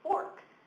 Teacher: So now I can say /er/. But I have to say /or/ when it's in the accented syllable like in fork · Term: r-controlled vowels